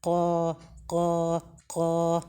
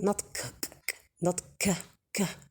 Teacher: The letter qaf, they may say qa and produce air, while the qaf is not included here in the hems letters. So it should not be accompanied by air, and the sound of the letters should be clear and apparent. Qa, qa, qa, like that.